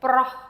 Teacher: it has the H sound, the air at the end